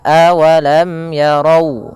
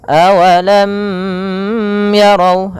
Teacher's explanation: apabila melafalkan huruf mim ini harus dibaca dengan jelas dan tidak boleh ditahan. Maka awalam yarau, langsung, tidak boleh awalam yarau ada misalkan gunnahnya, tidak, akan tetapi dia harus jelas dan tidak boleh ditahan. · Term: izhar syafawi